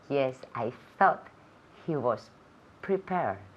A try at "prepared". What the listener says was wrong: Más fuerte al final, la terminación. Prepared. Prepared. So, the ending again, prepared. Prepared. El último sonido es una D. D. Prepared. Okay, so es muy importante poder escuchar o oír ese último sonido. Prepared.